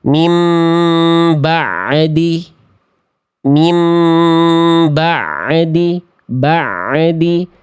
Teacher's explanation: Tadi clue kesalahannya adalah memantul. Ada suara tambahan di ujung pelafalan ainnya. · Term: pantulan